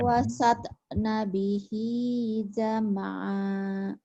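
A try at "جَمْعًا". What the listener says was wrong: Jam'an. Kenapa jadi panjang? Kalau berhenti jam'a jadi bermadiwan. Kalau berhenti. apanya jam'an ya.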